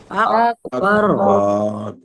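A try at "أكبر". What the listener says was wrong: বারতে বাতে লম্বা হবে না, আকবার,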